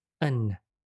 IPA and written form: ən (an)